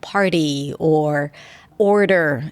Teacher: they become self-conscious about that flap T especially before an R like party or order it's a d but it's the same sound